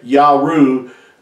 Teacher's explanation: that third letter had the U sound, not a W sound, nor a V sound